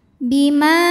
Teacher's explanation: maka huruf mim kita panjangkan boleh empat boleh lima harakat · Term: Mad Jaiz munfasil